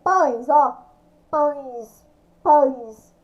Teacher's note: eu consigo identificar o ães, né, o som nasal ali perfeitamente.